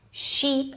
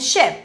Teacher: this distinction between the tense i and relaxed ɪ